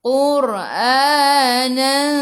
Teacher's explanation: Ra kena baca dengan tebal sebab sebelumnya baris depan tafkhim